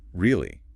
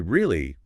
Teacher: If I say really with a rising pitch, I'm asking is that true? If I say really with a falling pitch, I'm saying I agree with you or maybe I am disappointed. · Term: intonation